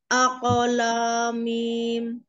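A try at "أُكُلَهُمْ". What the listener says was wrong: minnya jangan min, pendek umi, lah, yang panjang lahnya minnya pendek, aku lamim,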